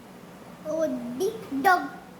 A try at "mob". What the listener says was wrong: OB है ये, जैसे COB कॉब, JOB जॉब, तो MOB, हाँ ROB, SOB सॉब, फिर से MOB क्या हुआ? LOB, SOB,